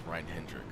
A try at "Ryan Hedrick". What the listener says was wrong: No, it's Ryan Hedrick. Oh. There's no N.